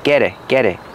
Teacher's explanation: we hear the T and get change to a fast D